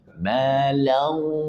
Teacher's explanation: Kemudian idgham bi gunnahnya belum ada gunnahnya. Malau, masukkan ke rongga hidung. Malau, idgham bi gunnah.